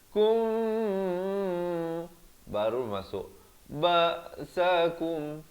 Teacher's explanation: jadi di sini 2 harakat ya, mim mati bertemu ba, ikhfa syafawi.